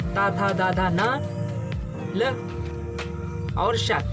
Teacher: तावर्ग के सभी वर्ण ता, था, दा, धा, न, ल और श, इनका उच्चारण स्थान क्या है? दंत